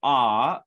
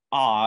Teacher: So those are considered both high vowels, whereas for ah, either bright ah or ah as in father has a quite low position of the tongue. And so those are considered low vowels.